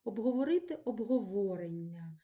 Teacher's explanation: наголос падає на корінь